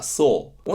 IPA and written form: sɔː (saw)